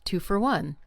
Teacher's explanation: The word for, f o r, often becomes fer.